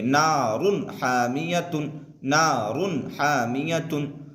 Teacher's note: نارن حامیتن بھی نہیں پڑھیں گے بلکہ اظہار کریں گے، یعنی تنوین کو دکھا کر کے بغیر غنہ کے جلد پڑھیں گے